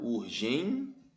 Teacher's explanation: uma paroxítona a penúltima sílaba é mais forte terminada em ditongo Então ela é uma paroxítona terminada em ditongo Então é isso